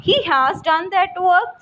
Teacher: in this you have to increase the pitch of your voice, increase the pitch of your sound, or you may say this is a rising intonation